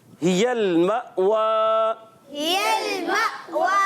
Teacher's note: حمزہ اور ہا حلق کے نیچے والے حصے سے ادا کرتے ہیں